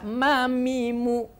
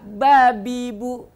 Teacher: makhrajnya adalah bibir makanya disebut syafatain atau syafawi